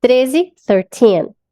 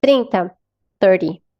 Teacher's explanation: Quando a gente tá aqui nos números do 13 ao 19, que eu gosto de falar que eles são os adolescentes, né, por causa do teen, quer dizer adolescente em inglês, então o teen é mais forte